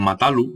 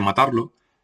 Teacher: se pierde la R final del infinitivo seguido de cualquier pronombre